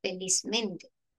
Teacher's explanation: que lógicamente posee una doble acentuación, una doble tonalidad, ¿no? Feliz en fe y mente. · mente también tiene su propia entonación en men. Entonces, es por eso que cuando éstas se fusionan, según las normas, conserva el adjetivo, recordemos que feliz es un adjetivo, conserva su propia acentuación.